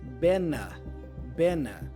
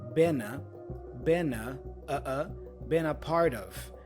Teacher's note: the N for Ben joins with the vowel a